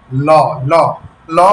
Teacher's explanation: যখন উপরে তালুর সাথে সংযুক্ত হয় ল তখন জিউভার দুই পাশ থেকে বাতাস বাইরে বের হয়ে যায় এবং এটা এত অল্প সময়ের মধ্যে হয় যে আমরা এটাকে ভালোভাবে অনুধাবন করতে পারি না। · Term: পার্শ্বজাত ধ্বনি